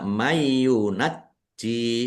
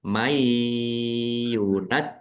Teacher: Nun sukun bertemu dengan huruf ya. masuk dengan mendengung yaitu mendengung ya ditahan biar tampak mendengungnya mayunaj tidak tidak dibaca mayyunajji tapi ditahan may yunajikum ada tasdidnya